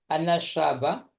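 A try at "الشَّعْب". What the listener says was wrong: Syab pemuda ya. Oh sya'ba pakai ain. Saya dengarnya syabah.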